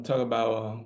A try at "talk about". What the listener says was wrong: Don't get that T at the end.